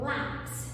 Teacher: eu tenho palavras que a penúltima sílaba é a tônica, ou seja, a penúltima sílaba é a mais forte · Paroxítonas, porque a penúltima sílaba é a sílaba tônica.